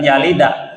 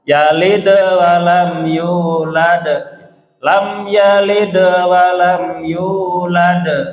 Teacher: Kubur itu besar karena dia aslinya memang qalqalah, jadi bukan karena diwakafkan, bukan karena diberhentikan, karena memang aslinya qalqalah maksudnya dia sukun yalid, jadi mantulnya harus jelas dan bunyinya mirip-mirip ke a, walaupun bukan a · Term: qalqalah kubro